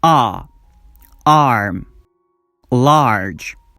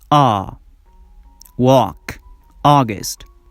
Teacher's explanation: when you pronounce the first sound your mouth is completely open your jaw drops down your lips are not rounded but when you pronounce the second sound your lips are rounded